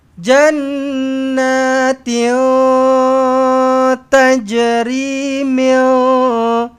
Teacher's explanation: So ikhfa hakiki, lidah jangan cecah lelangit. Lidah jangan naik, jangan gerakkan. Biarkan dia terapung di tengah-tengah.